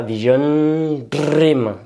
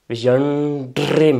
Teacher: vous allez faire une pause sur le N et ensuite embrayer sur le DR. Parce que, encore une fois, N, D, R, vous voyez, il y a toute une logique, toute une proximité dans les mouvements.